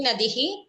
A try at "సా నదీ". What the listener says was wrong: దీర్ఘం చెప్పండి, మళ్ళీ ఒకసారి చెప్పండి. సా నదీ.